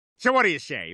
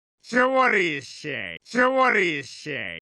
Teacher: Notice that what do you is pronounced as Whaddaya, which is a very good example of connected speech.